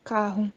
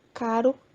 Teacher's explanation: O fonema R do português proveio do R latino, vibrante apical múltipla, que se opunha ao R provavelmente vibrante simples, de uma só batida, flap ou tap